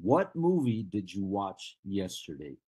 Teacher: I'm dropping the intonation